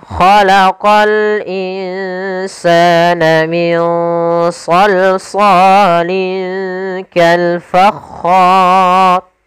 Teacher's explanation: hukum ro-nya, ro yang dibaca dengan tebal, maka dinamakan ro tafkhim, karena sebelumnya ada huruf fathah dan kemudian bertemu dengan huruf mad, maka ro-nya dibaca dengan tebal.